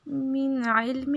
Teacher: یہاں پہ نون ساکن کے بعد حروف حلقی میں سے ہے تو یہاں پہ اظہار ہوگا، ناک پہ آواز کو نہیں چھپانا